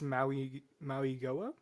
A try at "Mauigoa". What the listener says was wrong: Maui Noah. The G is actually sounded, yeah, it's like an N instead of a G.